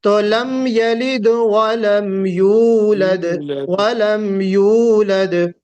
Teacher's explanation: یولد کا مطلب یہ ہوگا کہ یہاں آپ نے حمزہ لگا دیا، واو ہے، یہ واو مدیہ کہتے ہیں۔ واو سے پہلے اگر پیش آ جائے جو یا کے اوپر پیش ہے تو وہ واو حرف مد بن جاتا ہے، یعنی اس کو ہم کھینچ کر پڑھیں گے۔